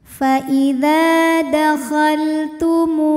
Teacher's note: ada waw sukun yang sebelumnya berharokat dhammah, maka huruf yang berharokat dhammah kita panjangkan 2 harokat. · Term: mad tabi'i dhahiri